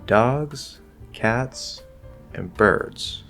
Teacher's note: fall and that is the closing bracket of the list so we rise on item one rise in item two fall partially on item three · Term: partial fall